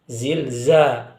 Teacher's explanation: za-nya itu panjang 2 harokat, dinamakan matobi'i karena alif sukun didahului harokat fathah.